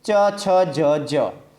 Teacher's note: જે વર્ણનો ઉચ્ચાર તાળવામાંથી થાય તેને આપણે તાલવ્ય વર્ણો કહીએ છીએ